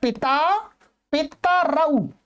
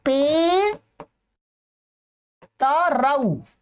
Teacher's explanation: ता में जो अ है वो ह्रस्व हो जाता है